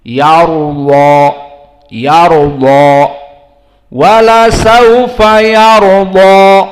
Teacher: Maka di sini semuanya mufakhamah sampai alif layyinah pun mufakhamah. Karena hukum alif layyinah atau alif, maka dia mengikuti dari huruf yang sebelumnya.